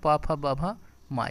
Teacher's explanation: प फ ब भ म ये ओष्ठ से होते हैं।